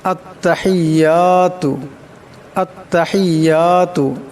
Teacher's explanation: এখানে বড় হা আছে, আওয়াজটা গলা থেকে আনতে হবে।